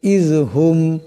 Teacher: এই মিম সাকিনকে গুন্না করা যাবে না